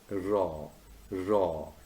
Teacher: raw sound at the beginning of red is formed with the tongue tip raised and curled back near the alveolar ridge.